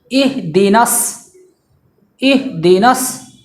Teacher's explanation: یہاں پہ اس بات کا دھیان رکھنا ہے کہ حمزہ کے بعد جو حرف وہ ہا ہے جو شروع حلق سے ادا ہوتا ہے